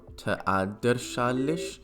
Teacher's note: that S ending of madres is going to become a CH.